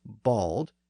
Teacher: English version of the word was bald and here we see the Northern text retain that original form and that original long a sound